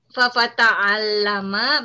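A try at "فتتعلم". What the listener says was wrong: Yang double huruf ta, bukan huruf fa-nya. Fatata'allama.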